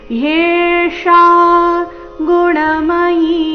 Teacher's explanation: ಯೆ ಸ್ಪಷ್ಟವಾಗಿ ಕೇಳಿಸ್ಬೇಕು. ಯೇಷಾ ಮೂರ್ಧನ್ಯ ಶ ಆಕಾರದೊಂದಿಗೆ